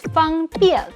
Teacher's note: And when he says 方便, it's a very full fourth tone in 便